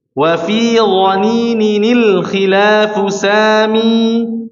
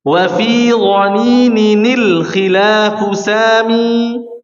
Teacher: Nah, ini tanwinnya diubah menjadi nun. Tanwinnya diubah menjadi huruf nun kasrah.